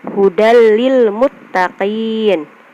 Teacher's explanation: Jadi fathah tainnya tidak dibaca jelas, dibacanya itu dileburkan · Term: idgham bila gunah